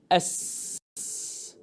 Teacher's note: All I want you to focus on is the abundant flow of air caused by the opening of the vocal cord, causing a whisper sound